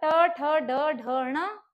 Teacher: कहां से बोला जाता है आपका मुर्धा से मुर्धा होता है कण और मुख का बीच वाला भाग त